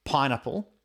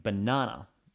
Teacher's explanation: Now try saying banana, and you'll notice that there's a significant difference. The P in pineapple produces a stronger burst of air than the B in banana